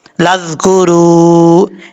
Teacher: را کے اوپر پیش ہے، پر پڑھا جائے گا، 1 الف کی مقدار اس کو لمبا کر کے پڑھیں گے واو مدہ کو